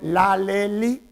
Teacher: con la punta de la lengua tocamos los alvéolos, que es la parte dura que está después de los dientes. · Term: apicoalveolar